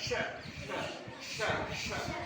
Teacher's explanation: इस वाले श में ऊपर टच कर रहे थे तालु से, इस वाले श में जीभ को नीचे मोड़ना है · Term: मूर्धा